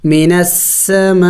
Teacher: مد کو 5 الف کے مقدار لمبا کرنا ہوتا ہے